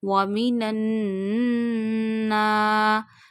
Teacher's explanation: you have to stretch noon because of gunna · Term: noon mushaddad gunna